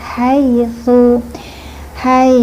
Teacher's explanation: H-nya ha ee makhrajnya tenggorokan. Ha tipis dan bersih. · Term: ha tipis bersih